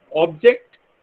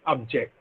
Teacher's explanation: to indicate that object is a noun, we put a stress on the first syllable, object, right? But to indicate that object is a verb, we put a stress on the second syllable, and it is object.